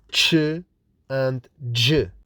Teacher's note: the first stage looks like plosives, the second stage looks like fricatives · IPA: /tʃ/ and /dʒ/, /tʃ/